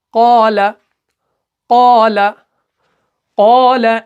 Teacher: قال زیادہ نہیں کھینچنا ہے، بلکہ 2 حرکت 2 سیکنڈ تک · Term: حروف مدہ